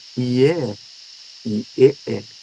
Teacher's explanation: as vogais frontais, né, que são feitas com a língua mais para frente da boca, perto dos dentes. Tá?